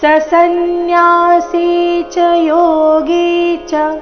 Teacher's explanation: ರಸ್ವ ಇದ್ದ ಕಾರಣ ಮುಂದಿನ ಶಬ್ದ ಸನ್ಯಾಸಿ ಅದಕ್ಕೆ ಜೋಡಿಸಿ ಸನ್ಯಾಸಿ ಚ ಯೋಗಿಚ ಎರಡು ಚರಣದಲ್ಲಿ ಬಂದಿರೋ ಎರಡು ಚ ರಸ್ವ ಬರಬೇಕು